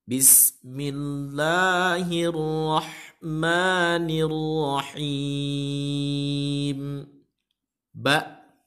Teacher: Pengucapan huruf ba adalah huruf syafatain. Huruf bibir. Yang dimana bibir tersebut harus sempurna menutup, agak dikencangkan sedikit para pendengar ya.